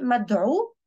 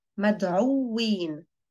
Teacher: The واو is geminated over here.